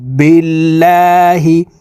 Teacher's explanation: লামকে পাতলা ভাবে পড়তে হবে কারণ আল্লাহ শব্দের আগের হরফে জের আছে